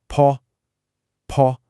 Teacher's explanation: Now for P. P is a literal explosion of air. It's aspirated. · You should feel that puff of air hit your hand. That difference, bo versus po, is the difference between two completely separate words.